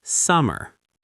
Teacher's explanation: it's summer, with the stress on the first syllable